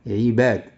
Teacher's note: المقطع الأخير هو مقطع ثنائي، إذا النبر سوف تضعه على الباء